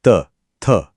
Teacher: इन्हें बोलने के लिए जीभ की नोक यानी the tip of the tongue ऊपर के दांतों के पिछले हिस्से को छूती है।